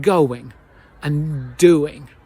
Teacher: going and doing, we have this W in the middle and we use the same idea to connect lots of other words. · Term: Linking